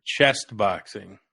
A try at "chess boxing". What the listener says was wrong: chess, like No, no T. Chess, like